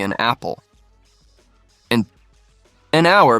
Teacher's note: because the H in hour is silent so it starts with a vowel sound